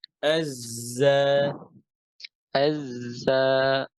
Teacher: জিহ্বার মাথা কোথায় লাগবে নিচের দাঁতের গোড়ায়